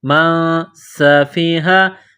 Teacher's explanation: سین میں سیٹی کی آواز پیدا کرنی ہے، سین کو باریک کرنا ہے۔ · نون ساکن کے بعد سین ہے، حروف اخفا ہے تو نون ساکن پر غنہ کریں گے۔